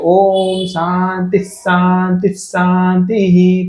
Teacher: છેલ્લો જે હી બોલે છે ને શાંતિહી એમાં આપણેને સીધું સંભળાય છે વચ્ચેના બે શાંતિ શાંતિમાં નથી સંભળાતું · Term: વિસર્ગ